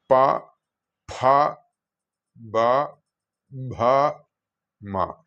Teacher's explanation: ചുണ്ടുകൾ കൂട്ടി ഉച്ചരിക്കേണ്ടതായതിനാൽ ഇതിന് ഓഷ്ഠ്യ ശബ്ദങ്ങൾ എന്നാണ് പറയുക അല്ലെങ്കിൽ ലേബിയൽസ്.